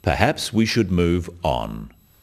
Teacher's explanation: The first one, perhaps we should move on, is phrased as a suggestion, but it is said in a firm way with a falling intonation at the end